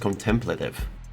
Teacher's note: Emphasis on the second syllable.